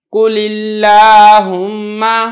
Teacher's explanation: سے زیر کی مثال دیکھ لیں قل اللہم، اب یہاں پہ لفظ اللہم سے پہلے زیر ہے لہذا لفظ اللہم کو میں نے باریک کر کے ادا کیا ہے